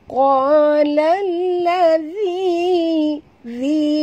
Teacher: Qalallazi, zi keluarkan hujung lidah sikit. Selagi tak sentil hujung lidah, selagi itu tak betul makhraj dzal ya.